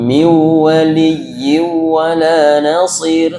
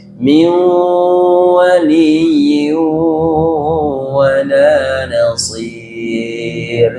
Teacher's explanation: Itu sama-sama idgham bigunah ya. sama-sama harus dimasukkan nunnya ke wau dan disertai dengan dengung. Nah, setiap kita menemukan bacaan begini pastikan harus ditahan dulu.